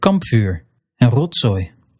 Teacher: V and Z, they can devoice, turning into F and S, if they show up after a voiceless P, T, or K, or S or F or G.